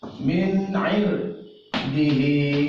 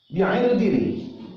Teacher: Karena ro yang mati di depannya ada huruf isti'la. Ini dibolehkan dibaca tebal dan dibaca tipis. Kemudian Bapak dan Ibu, sebagai contoh berikutnya bi'irdin. · Ro yang mati, kemudian di depannya ada huruf isti'la. Ini Bapak dan Ibu boleh dibaca tebal, boleh dibaca tipis. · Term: jawazul wajhain